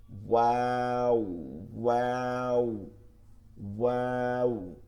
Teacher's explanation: দুই ঠোঁট গোল করিয়া মুখ খোলা রাখিয়া ওয়াও